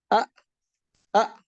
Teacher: حمزہ جھٹکے سے ادا ہوگا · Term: حتف